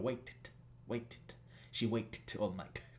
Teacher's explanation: lo que hacemos es sumamos una nueva sílaba directamente. Es el id. Entonces esto va justamente como una sílaba adicional.